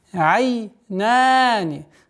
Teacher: долгота в размере двух огласовок, фатха над буквой нун